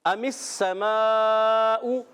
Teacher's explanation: حمزہ کو خوب واضح کرنا ہے، میم کو سین سے ملانا ہے